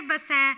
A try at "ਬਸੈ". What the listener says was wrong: ਬਸੈ ਬਿੰਦੀ ਨਹੀਂ, ਬਿੰਦੀ ਤੋਂ ਬਿਨਾ ਸੁੱਧ ਹੈ। ਬਸੈ ਸੁੱਧਾ ਬੱਬਾ ਸੱਚੇ ਨੂੰ ਦਿਲਾਵਾਂ, ਬਿੰਦੀ ਨਹੀਂ ਚਾਹੀਦੀ।